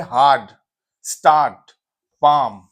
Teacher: आ वोवेल है जिसको खींच के पढ़ते हैं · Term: लॉन्ग वोवेल